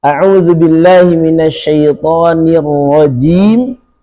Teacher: Huruf jim yang keluar dari tengah lidah. Dia punya sifat jahr.